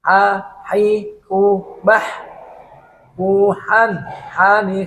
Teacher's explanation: suaranya bersih tidak ada getaran dan tidak ada suara yang akan menyerupai huruf k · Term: huruf Kha